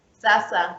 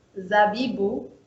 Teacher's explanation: So, like S and Z is a little bit difficult at the beginning to differ from each other, so as they might sound the same, but there's really a big difference, as the S is very sharp and the Z is very soft.